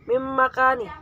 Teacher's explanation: 'Alaihim ama ulaika yunadawna mim makani disebut dengan bacaan idgham bihuna sebab nun sukun bertemu dengan mim